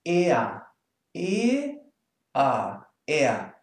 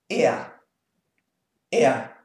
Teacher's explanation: There's no R, no whatsoever. It's just er.